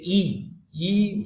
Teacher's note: আমাদের মুখ গহ্বরের একেবারে দেখবে দাঁতের গোড়া আর মূর্ধা, ওর মাঝামাঝি জায়গায় একটা শক্ত অংশ, ওই ছ উচ্চারণ করতে গেলে জিভটা যে জায়গায় যায় ওটাকে বলে তালু, আর হ্রস্বই উচ্চারণ করতে গেলে জিভটা ওর কাছাকাছি যায় বলে এটা তালব্য · প্রসৃত উচ্চারণের ক্ষেত্রে আমরা দেখে নিলাম যে ঠোঁটটা ছড়ানো হয়ে যাচ্ছে